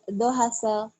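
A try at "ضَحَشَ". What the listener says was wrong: Salah. Shinnya gede. Dohasya. Dohasya. Dohasya.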